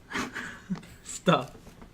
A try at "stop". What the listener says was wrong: you gotta put the AW in there.